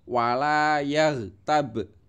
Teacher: Baknya itu mantul ya. Kalau ghoinnya itu tidak mantul.